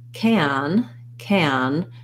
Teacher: because the n is coming it's lifted and nasalized the vowel might be a little more closed so i'm not going to go all the way to an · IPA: /æ/